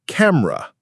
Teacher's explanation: While it looks like it has 3 distinct syllables, the middle syllable is quite light.